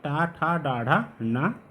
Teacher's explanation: इन सभी वर्णों का उच्चारण स्थान होता है मूर्धा।